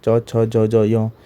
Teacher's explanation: च वर्ग के जितने आते हैं उन सबके तालव्य से होता है